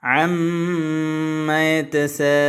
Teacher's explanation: ഷദ്ദിന്റെ ചിഹ്നമുള്ള നൂനിനെയും മീമിനെയും ഇരട്ടിപ്പിക്കുന്നതിന് പുറമെ 2 ഹറക്കത്തിന്റെ സമയമെടുത്ത് മണിക്കുകയും വേണം